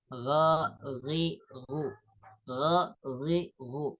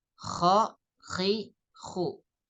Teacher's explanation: kalau Gin tidak serak kalau ko itu serak ada serak Sedikit